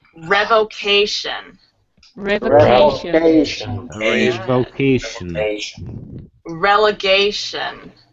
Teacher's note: four syllables. Emphasize the third syllable.